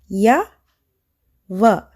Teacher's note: అండ్ ఈ 2 sounds pronounce చేస్తున్నప్పుడు ఎయిర్ అనేది ఫ్రీగా ఫ్లో అవుతుంది లైక్ వొవెల్ సౌండ్స్. సో వీటిని మనం సెమీ వొవెల్స్ అంటాము.